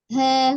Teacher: Nah, jadi pengucapan huruf H tidak ke dada turun, ha, tidak, tapi juga tidak ha, menyerupai H kecil ya, tidak, karena sifatnya tadi roghoah tetap lembut ya, dan istifal termasuk huruf yang tipis, jadi tidak ditekan, tetap ha mengalir dengan lembut. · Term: H besar